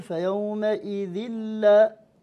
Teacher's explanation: فيومئذ هذا التنوين بعده اللام، إذا نقول فيومئذ لا، إذ لا نقرأ كسرة واحدة، نقرأ لا حركة واحدة ونشد اللام